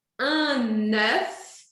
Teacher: Aqui eu vou dizer un œuf Para fazer esse eu penso na letra E de égua e arredondo os lábios